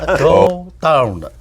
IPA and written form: goʊ daʊn (Go down)